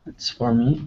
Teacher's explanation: it kind of sounds like it doesn't even have the o there